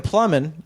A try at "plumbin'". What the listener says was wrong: Plumbing with no G. Plumbing. Plumbing. Plumbing.